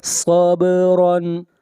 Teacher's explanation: با کے اوپر قلقلہ ہوگا، آواز کو ہلائیں گے